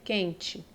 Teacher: Um dígrafo vocálico do E com N, pois o N ele está nasalizando a letra E